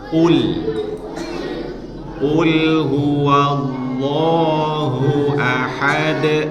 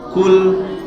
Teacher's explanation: qul itu tebal, jangan dibaca tipis. Jangan dibaca kul.